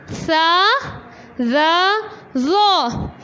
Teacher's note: زبان کی نوک ثنایا علیہ کے کناروں سے لگائیے پیچھے کی طرف سے.